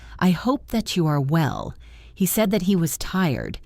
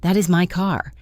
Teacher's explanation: In these cases, the word that is almost silent. It is just a bridge.